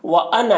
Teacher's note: یہاں پر یہ انا کا الف کو نہیں پڑھا جاتا ہے، یعنی اس کو کھینچ کے نہیں پڑھنا ہے.